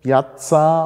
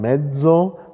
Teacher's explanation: wenn Sie genau hinhören dann erkennen sie Piazza stimmlos und medzo stimmhaft